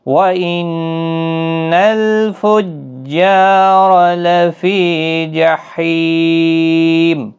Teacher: فجار تشدید والا حرف سختی کے ساتھ پڑھیں تاکہ تشدید ظاہر ہو